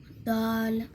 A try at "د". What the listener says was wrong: दाल नहीं करेंगे, साकिन से हिलाना नहीं है लफ्ज़ को। दाल नॉर्मल जैसे हम दाल बोलते हैं वैसे बोलें। तीनों में जबान ऊपर वाले दांतों के पीछे लगेगी।